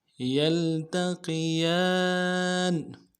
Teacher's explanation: یا کو لام کے ساتھ ملانا ہے، تا کو نرم سے ادا کرنا ہے، قوف کو موٹا ادا کرنا ہے، یلتقی، قی، یا کے اوپر کھڑا زبر ہے، ایک الف مقدار میں کھینچیں گے، نون کو نرم سے ادا کریں گے۔